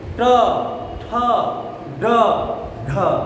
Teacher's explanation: जीव देखिए तालु से ऊपर वाला भाग को स्पर्श करता है। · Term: मूर्धा